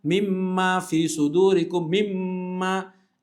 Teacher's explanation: keluarnya dari hidung dari khaisyum kalau kita tutup hidung hilang suaranya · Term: dengung